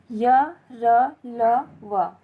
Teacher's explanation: इनका उच्चारण जीभ, तालु, दांत, ओठों के परस्पर सटने से होता है, किंतु कहीं भी स्पर्श व्यंजन नहीं होता है, पूर्ण स्पर्श व्यंजन नहीं होता है। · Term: अंतस्थ व्यंजन